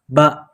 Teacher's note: ketika bibir merapat, udara tidak mungkin keluar, kemudian udara dilepaskan secara sekaligus dan udara bertiup keluar melalui bibir menghasilkan suara yang eksplosif seperti halnya ketika mengucapkan huruf ba, dan melingkar ketika dalam keadaan pengucapan dhammah.